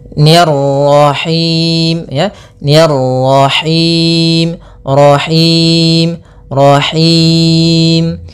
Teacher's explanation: ro-nya lagi tebal karena di sini ro tafkhim, yaitu ro yang berharakat tasydid.